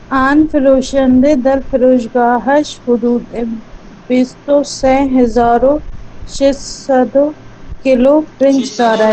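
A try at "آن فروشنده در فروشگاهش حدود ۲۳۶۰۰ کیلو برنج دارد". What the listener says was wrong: نہیں ہے, 600 کے بعد واو نہیں ہے جو 600 پڑھا آپ نے.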